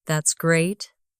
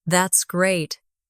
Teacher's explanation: If you say, That's great, with a flat tone, it sounds like you don't care.